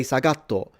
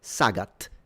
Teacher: he would call it sagato because they usually never end anything with a single consonant in Japanese, right? So, you never have a word in Japanese that finishes with a t.